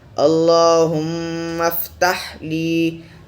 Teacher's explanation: ہم ہونٹا بند کر کر ناک سے آواز آنا چاہیے